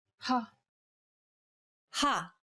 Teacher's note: saying this sound involves a forceful expulsion of air